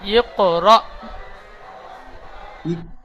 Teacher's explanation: হামজার উপরে সাকিন থাকলে সাকিন যুক্ত হামজাকে একটু ঝাটকা বা ধাক্কা দিয়ে পড়তে হয়। তাহলে এখানে র হামজা জাবার র, হামজার উপরে সাকিন আছে, ঝাটকা দিয়ে পড়বেন।